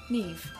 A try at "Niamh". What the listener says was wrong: That's not Neve. There's not a V in there at all.